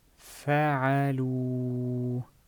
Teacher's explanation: As you would notice, this alif was not enunciated at all. I did not say فعلوا. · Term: silent alif